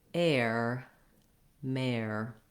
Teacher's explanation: west coast english so to say that kind of mary what you want is to have a tense a sound before your r so you're gliding from the a that's more forward into your tight r